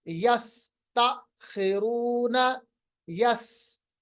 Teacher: आवाज दांतों के बीच में से निकालनी है तेज सीटी की मानंद, विसल की मानंद। इसी को हम कहते हैं सफीर। · यस सीटी की तरह तेज तरार आवाज विसल की तरह निकलती है, जिसको हम सिफत सफीर कहते हैं।